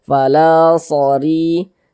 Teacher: Ya dibaca tarkik, baca tipis. Tipiskan huruf ro-nya. Fala sori. Ri dibaca panjang.